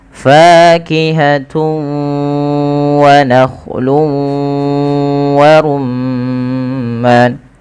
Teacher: Cara membacanya yaitu memasukkan tanwinnya kepada huruf waw, karena idgham itu artinya memasukkan, bi gunnah disertai dengan gunnah. · Cara membacanya pun sama, kedua-duanya harus sama bacaannya. Ya, wa nakhlu wa rumman sambil dimasukkan ke rongga hidung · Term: idgham bi gunnah